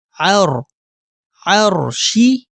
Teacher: اگر را ساکن ہو اور را سے پہلے والے حرف پر زبر یا پیش ہو تو اس صورت میں ہم را کو موٹا یعنی منہ پر کر کے پڑھتے ہیں۔ تو یہاں ہم را کو موٹا یعنی منہ پر کر کے پڑھیں گے